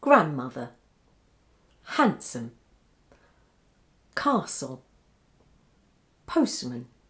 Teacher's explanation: listen to these words where the disappearance of sounds d or t is considered normal. You should say them like this: grandmother, handsome, castle, postman.